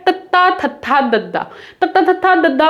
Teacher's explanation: ਸਾਡੀ ਜੀਭ ਦੰਦਾਂ ਨੂੰ ਟੱਚ ਕਰਦੀ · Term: ਦੰਤੀ ਧੁਨੀਆਂ